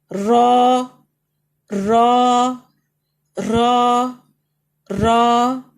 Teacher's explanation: رو یہ بھی heavy letter ہے، منہ کھلے گا، اوپر کی طرف جائیں گے.